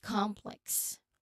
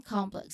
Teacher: this is a quick movement from the nasal M to the lip closure for P, and then the tongue movement for L. Okay, so try complex, focusing on that smooth MPL behind. · this is composed of M and P, which is unaspirated, and then L. Okay, so three sounds in total. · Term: MPL cluster